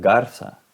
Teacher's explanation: en América Latina la z no tiene voz y suena como la S